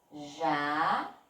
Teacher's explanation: Então, na palavra jacaré, a sílaba forte é o ré